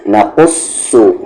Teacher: یہ قاف ہیوی ہے یعنی کہ اس کی آواز موٹی ہوگی، اور یہ صاد بھی، نقصو نہ کہ نقصو، نقصو۔